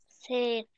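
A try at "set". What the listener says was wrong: ليه سات؟ ليه بتقولي ايه ؟ الاي اكنها مش موجودة، انطقي ست. يبقى على بعض ايه؟ ست بس، ست على بعض ست مش سات.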